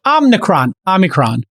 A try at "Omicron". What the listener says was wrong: There is no N. Omicron.